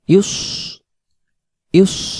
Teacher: উচ্চারণটা করবো আমরা ইউস ইউস, মুখ গোল হয়ে যাবে